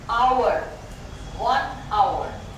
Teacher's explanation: पर एच एक ऐसा साउंड है, जैसे अपन ने कहा आवर, 1 आवर, तो अब यहां पर साइलेंट हो गया, नो साउंड।